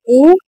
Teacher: ए कंठ से भी निकलते हैं और तालव्य से भी, बोलकर देखिए ए कंठ और तालव्य से जीभ क्या टच हो रहा है, तो कंठ तालव्य है, ऑप्शन नंबर डी।